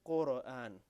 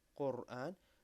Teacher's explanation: we don't bounce the letter ra